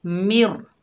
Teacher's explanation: इदगाम बिला गुन्ना करेंगे, यानी बगैर गुन्ने के पढ़ेंगे। कैसे? मिर, नून की आवाज़ ख़त्म हो जाएगी, मिर।